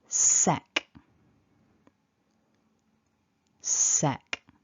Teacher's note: sound then we've got a short e and an unvoiced so our consonants are quite breathy in this first syllable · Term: hissing sound